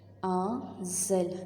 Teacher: آذلنا، حمزہ کا زبر نون کے ساتھ ملے گا کیونکہ نون کے اوپر جزم ہے۔ آذل، نون کو ہم نے تھوڑا سا چھپانا ہے، کیونکہ نون کے بعد حرف اخفاء آ رہا ہے